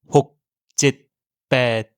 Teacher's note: En thaï, le son s'arrête d'un coup au moment où vous prononcez la lettre. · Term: consonnes finales